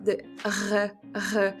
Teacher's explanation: a bit like you're scratching the top of your throat or something